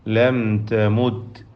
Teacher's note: സാക്കിനത മീം ഇൽഹാർ ഷഫവി മണിക്കാതെ വെളിവാക്കുക